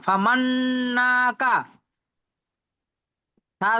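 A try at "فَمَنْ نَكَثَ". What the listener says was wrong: আপনি ভুল বললেন, ফামান না কাসা, নুনেও টান দিয়েছেন, কাফেও টান দিয়েছেন, না কাসা, দেখেন তো টান হচ্ছে কি, না কাসা, এইটা এইরকমই হওয়ার কথা ছিল। আর না কাসা এটাই সঠিক।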